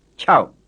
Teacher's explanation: word that ends in a glottal stop